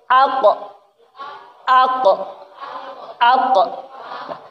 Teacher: Ko sama ka beda. Ko huruf qalqalah. Ketika mantul, ketika sukun dia mantul.